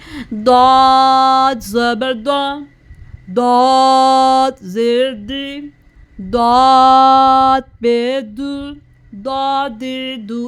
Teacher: हमने दाद पढ़ते हुए सिर्फ दाद का मखरज अदा करना है, क्योंकि जो तीनों हर्फ है इसमें ज़बान की नोक इस्तेमाल होती है, जबकि दाद पढ़ते हुए ज़बान का जो हाफा होता है ऊपर दाढ़ों की जड़ के साथ लगता है